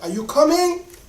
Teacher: So like if I want to ask you a question, are you coming? Because it's a question mark, I'm going to raise my voice.